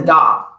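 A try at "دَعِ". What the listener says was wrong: No, but there's kasra. And the da.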